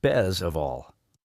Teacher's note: did you notice that the t sound almost disappears sometimes? For example, in the phrase best of all, it can sound like bez of all.